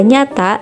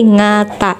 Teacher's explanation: dalam dialek Cirebon terdapat beberapa pengucapan konsonan yang berbeda dari bahasa Jawa umumnya, seperti pengucapan NY sebagai NG. Misalnya, kata nyata diucapkan sebagai ngata.